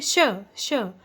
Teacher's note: हवा को बाहर धकेला इसमें, तो ये क्या कहलाते हैं, ऊष्म व्यंजन